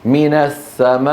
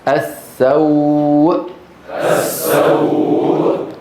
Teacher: كيف اخرجها اه بقفل الوترين الصوتيين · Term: همزه متطرفه